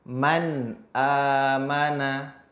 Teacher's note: Man ada gunnahnya tetapi tidak panjang, tidak ditambah. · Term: gunnah tanpa tambahan